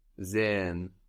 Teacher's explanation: The S on sehen sounds like a Z.